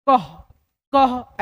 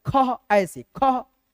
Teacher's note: तो यहाँ पे देखिए अह की मात्रा में 2 विसर्ग, ठीक है, 2 विसर्ग किसी भी अक्षर के आगे लगता है, जैसे कि अह की मात्रा लगता है और इसका उच्चारण होता है आधा ह, क्या होता है, आधा ह। ऐसे ह को उच्चारण करना है जिसमें कि आपको अ का ध्वनि सुनाई न दे